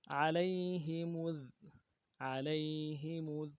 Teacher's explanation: عین کو موٹا کرنا ہے. لام کو یا کے ساتھ ملانا ہے. یا لین ہے، بغیر کھینچے پڑیں گے.